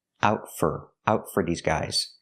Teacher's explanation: For is pronounced fur because it's not stressed.